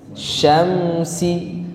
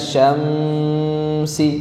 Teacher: izhar syafawi mim sukun ketemu Sin nah mim sukun ketemu Sin namanya izhar syafawi jadi harus dibaca jelas Syamsi enggak boleh dibaca Syamsi Nah itu namanya zhar syafawi Ada